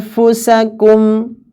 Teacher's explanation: Jadi nunnya itu sekali lagi tidak nempel. Ya, sekali lagi lidahnya itu tidak ditempelkan pada makhrajnya. Jangan anfusakum, anfusakum, lidahnya jangan ditempelkan. · Kebetulan fa itu di bibir. Maka ya sudah, lidah diletakkan menggantung saja. Diletakkan sebagaimana biasa. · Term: ikhfa